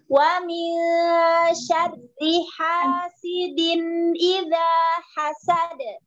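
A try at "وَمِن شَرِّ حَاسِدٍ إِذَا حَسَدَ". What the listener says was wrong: Jangan wa min, enggak boleh. Wa min, langsung. Tampit-tampit kayak hasidin wa min, itu harus buru-buru diilangin, Bu. Satu harokat itu satu ketukan. Sebenarnya satu harokat itu satu ketukan.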